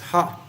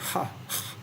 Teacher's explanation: pure aspirate, it's ha. So that's a lot of aspiration there, ha. As in hunger or in hurry.